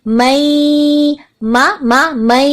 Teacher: اب میم زبر ما کو ہمیں آگے یا کے ساتھ ملانا ہے، کیونکہ ہم جانتے ہیں کہ نون ساکن کے بعد جب بھی یا آئے تو کیا ہوتا ہے، ادغام ہوتا ہے اور غنہ کے ساتھ ہوتا ہے